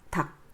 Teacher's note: 리을 기억, 여기에서 리을이 탈락되죠. 닭.